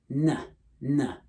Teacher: With the N sound, it's like n, right? The tongue is kind of pushed forward and flattened.